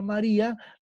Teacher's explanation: en el caso de la palabra María, la que suena más es ri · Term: sílaba tónica